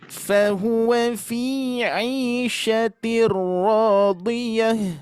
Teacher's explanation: ketika wakof dalam kurung menghentikan bacaan tidak dibaca tak melainkan dibaca hak sukun